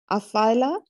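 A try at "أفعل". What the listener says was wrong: No, not afal. Majzum. Majzum means jazm. It means sukoon.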